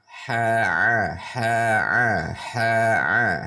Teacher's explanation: Haa nanti letaknya di tengah tenggorokan. Untuk mengeluarkannya harus menekan di tengah tenggorokan. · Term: ain